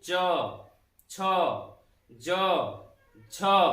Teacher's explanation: तो जैसे च वर्ग का यदि उच्चारण करें मित्रों, तो च वर्ग का उच्चारण करते समय हमारी जो जिह्वा है ये तालु से जाके टच होती है। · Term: तालु वर्ण